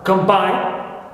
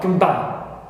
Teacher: O becomes and turns into shva, reduced to shva.